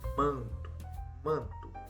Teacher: Quando eu falo manto, esse A acompanhado do N é como se tivesse um tio em cima. Então fica manto, o som sai pelo nariz, ele ressoa pelo nariz. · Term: nasal